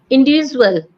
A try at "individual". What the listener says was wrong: Individual. Individual. No. Individual. Individual. Individual. Not visual. Z. Visual. Visual. Individual. No, no. Not z. Don't say the z individual. It's not z, a short.